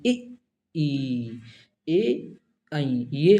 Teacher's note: अग्र स्वर जीभ के अगले हिस्से से बोले जाते हैं।